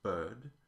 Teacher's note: The R-flavored central vowel, is no longer R-colored, and so it goes bird, and they have a rounded vowel O, as in hot.